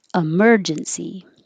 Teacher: the e is not stressed so you can change it to uh